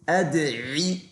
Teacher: it's qalqala, it's an echoey, bouncy sound. أدعي, make sure you make the عين clear.